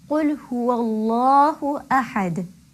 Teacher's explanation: I'm sure you could hear the heaviness of the lam coming through. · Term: lam tafkhim